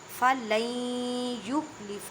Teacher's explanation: اب دیکھیں نون ساکن کے بعد یا ہے، اور یا حروف یرملون میں ہے، ادغام مع گنہ کریں۔